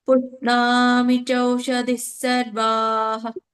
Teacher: ಪ್ರಶ್ವಾಸ ಬಿಡ್ಬೇಕು ಹಾ ಹೇಳುವಾಗ. ನಮ್ಮ ಗಂಟಲಿಂದ ಹೇಗೆ ಗಾಳಿ ಬಿಡ್ತೀವಲ್ಲ, ಹಾಗೆ ಹೇಳ್ಬೇಕು. ಹಾನು ಪೂರ್ಣ ಬರಲ್ಲ.